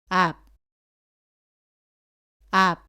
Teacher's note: 이때의 받침소리 비읍은 첫 소리에서 오는 바와는 다르게 두 입술을 붙인 채로 발음을 끝냅니다.